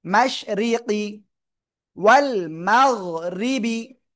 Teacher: র নিচে জের চিকুন করে পড়তে হবে